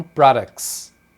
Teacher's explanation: É assim que eles pronunciam products, uma consoante, o T e o S. Essa combinação, geralmente eles vão tirar o T. Então, products, na verdade, as pessoas falam products.